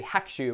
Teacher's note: the U of the ku gets a little bit swallowed up. It's still there, but better to say Hakushu rather than Hakushu.